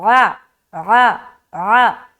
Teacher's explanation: آ نہیں بولنا، آ بولیں گے حمزہ بن جائے گا، بلکہ حلق سے